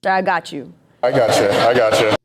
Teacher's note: This phrase has a falling intonation. It signals certainty like don't worry.